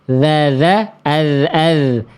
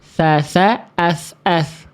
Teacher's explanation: Dasa ini pelafalannya sama persis. Ujung lidah bertemu dengan ujung gigi atas.